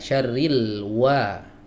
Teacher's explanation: Huruf wau di sini makhrajnya ada di dua bibir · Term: wawu ghairu maddiah